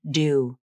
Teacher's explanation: Then everything is released. You can't see the vibration, but the vocal cords are also vibrating as you say the D consonant sound. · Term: true D